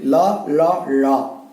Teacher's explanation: நாவினுடைய இரு பக்கங்கள் தடித்து மேல் பற்களினுடைய அடியை தொடுவதால் லகரம் தோன்றும். பாத்தீங்கன்னா அந்த நா மேல் பற்களினுடைய அடியை தொடணும்.